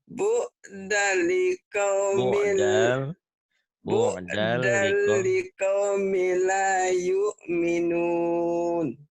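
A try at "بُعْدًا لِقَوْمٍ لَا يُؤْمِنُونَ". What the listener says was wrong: Banyak panjang Bu.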